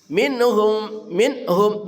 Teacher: nunnya juga dibaca jelas Namanya izar halqi. Nun mati bertemu ha.